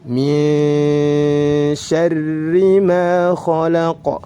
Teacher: ra bertasydid dan berharokat kasrah harus dibaca dengan tarqiq. Tarqiq ialah tipis, dibaca tipis.